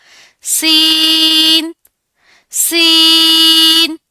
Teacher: Next word is सीन सीन सीन का भी same जा का मखरज है। यानी जब जुबान की नोक नीचे वाले सामने के दो दांतों के अंदरूनी किनारों से लगे तो सीन अदा होगा।